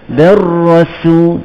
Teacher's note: Ra tu kita tepi lidah melencong.